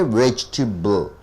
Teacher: You are stressing on the first syllable.